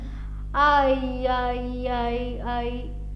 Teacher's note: असं फास्ट म्हटलं की लक्षात येतं की ऐ चा उच्चार होतो